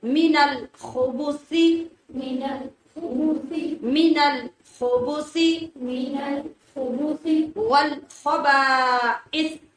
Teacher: خا کو موٹا اور رگڑ کی آواز کے ساتھ، اور سا کو بغیر سیٹی کی آواز کے نرمی سے